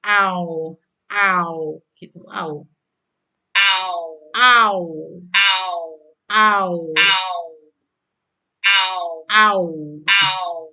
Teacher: jadi lidah bagian belakang itu naik dan turun